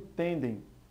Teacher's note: a pronúncia mais forte fica na sílaba tem e não em dem. Por esse motivo, nós temos aí uma paroxítona.